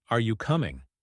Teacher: when asking a question like, Are you coming? your voice rises at the end.